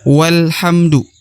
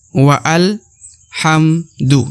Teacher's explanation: wasal atau Alif penyambung ya yang menyambungkan kedua kata ini ya jika terdapat kata sebelumnya ya maka dibaca walamdu tidak dibaca WA Al hamdu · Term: Hamzah wasal